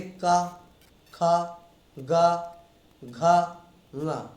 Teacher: हर एक लेटर में आपकी जिह्वा कंठ में स्पर्श करेगी, तभी ये लेटर निकलेंगे। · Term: कवर्ग